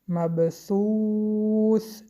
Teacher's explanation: حرف ب با سکون قلقله می کنیم